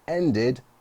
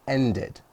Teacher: with end, we actually add an extra syllable, an extra sound, and it ends with id.